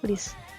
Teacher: Yang pertama, itu dibaca seperti huruf I dalam bahasa Indonesia, tapi panjang harokatnya dalam membaca Al-Quran itu satu saja. Lalu bunyinya itu agak setengah E, jadi nggak murni dibaca I.